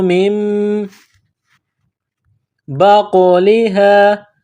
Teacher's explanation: یہ نقطوں والا قاف ہے اس کو موٹا کرنا ہے۔ قاف کے اوپر قلقلہ کریں گے